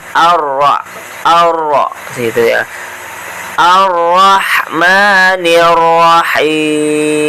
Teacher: ro-nya ro bertasydid, cara bacanya ditekan ya.